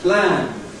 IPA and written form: plæn (plan)